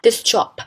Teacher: the sound sh or voiceless alveopalatal fricative affects the sound s, voiceless alveolar fricative, to be changed to voiceless alveopalatal fricative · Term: assimilation